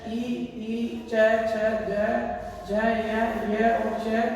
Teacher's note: ई, च, छ, ज, य और च ये तालु से बोले जाते हैं